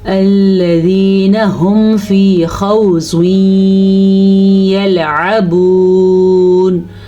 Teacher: زواد کو پر پڑھنا ہے کیونکہ زواد حروف مستعلیہ میں سے ہے